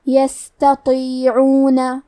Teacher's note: تا حروف ترقیق میں سے ہے تو ہمیں تا کو پتلی آواز میں پڑھنا ہے، لیکن طو حروف تفخیم میں سے ہے تو ہم طو کو بھاری آواز میں پڑھیں گے